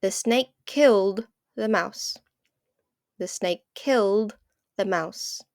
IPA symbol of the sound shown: d